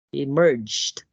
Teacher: stress is in the second syllable